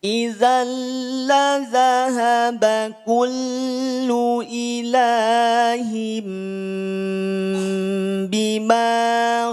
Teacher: tanwin yang ada pada huruf H ini akan berubah menjadi m nah ini hukumnya adalah ikqlab bacanya dua harakat iqlab samar dengung